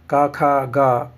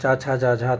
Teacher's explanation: क ख ग कंठ है और च छ ज झा तालव्य है